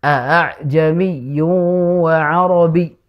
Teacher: a yang kedua ini dibaca dengan samar antara hamzah dan alif. Jadi kita baca sepertinya begini, a'jami, bukan a'jami, tapi juga bukan a'jami, enggak, tapi a'jami wa arabi, begitu. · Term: Tashil